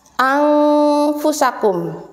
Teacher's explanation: Cara membacanya adalah dengan samar-samar. Tidak jelas juga tidak terlalu dengung. Contohnya di sini contoh ikhfa.